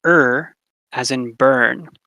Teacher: it's called an an r-colored vowel and it's extremely rare cross-linguistically